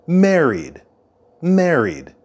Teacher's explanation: the D sound at the end of married married married and the stress of the word married is at the beginning